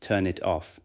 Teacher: the phrase turn it off might sound to an untrained ear almost like one long word, turn it off, with the individual word boundaries nearly disappearing.